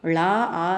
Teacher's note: லா ஆ சேர்ந்து வர்றதுனால அங்க மூன்று மாத்திரை அளவு நீட்டி ஒலிக்கிறது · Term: உயிரளபடை